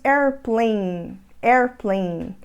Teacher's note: Então nós falamos airplane, airplane. Então a gente segura esse N no final, airplane. A gente não vai falar airplane.